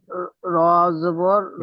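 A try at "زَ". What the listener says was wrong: র নয়, র নয়, যা, যা, র নয়, যা। আলিফ, যা, আলিফ জাবার যা।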